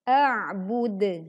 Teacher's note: dal dibaca wakaf sehingga kondisinya menjadi mati karena di akhir bacaan maka pantulannya terdengar lebih kuat dan lebih jelas